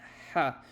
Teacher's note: So, um, you do, you know, you kind of try to make a h and then you go back and back and back into your throat until you get to ha, but you don't go raspy · Um however in biblical Hebrew it would not be a rather it would be a ha. Um a ha is it sounds kind of like ha but it's deeper back in your throat